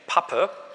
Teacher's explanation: einfach Lippen aufeinander und dann lassen Sie diesen Verschluss, machen Sie plötzlich auf und dann kommt so ein Schwall Luft raus. Merken Sie auch, wenn Sie Pappe sagen dann, und das ein bisschen übertreiben, dann merken Sie, dass da so eine Stoßwelle rauskommt. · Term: Plosive